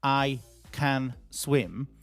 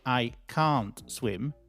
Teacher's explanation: if it's positive, it doesn't need to be really heard. And so, we weaken it. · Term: weak form